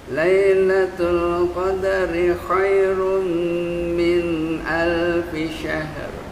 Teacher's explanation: Minnya jangan lama-lama, naikin ke atas ke hidung